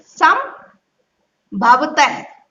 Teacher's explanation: ये बिंदी है सा पर, अंक की बिंदी है, ये आधे माँ के रूप में पढ़ी जाएगी। इसको देखिए आप कैसे पढ़ना है, आधा माँ भ व तह।